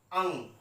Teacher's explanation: अंग को जब हम बोलते हैं तो इसकी ध्वनि नाक की सहायता से निकलती है, इसीलिए यह वर्ण नासिक्य वर्ण कहलाता है।